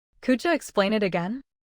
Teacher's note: The D and Y blend and the T and it links to again.